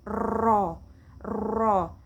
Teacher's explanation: huruf inhiraf takrir, bergetar ujung lidah seperti huruf ro.